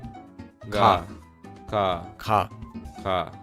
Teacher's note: Notice how it's not ca and it's not ga, but it's ca. This sound is between a k and a g in English.